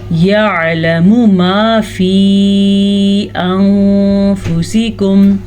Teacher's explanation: اس مد کی مقدار تقریباً 2.5 حرکات عربیہ ہے، اس کو چھوٹی مد کہتے ہیں. 2 سے 2.5 سیکنڈ تک ہم اس مد کو کھینچ کے پڑھیں گے.